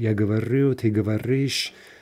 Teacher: that ты form makes clear that the stress is staying on the ending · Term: in-stressed verb